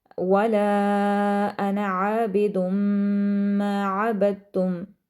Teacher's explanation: ماں کو لمبا کریں گے اور کیونکہ تشدید ہے میم پر تو ہم میم پر غنہ کریں گے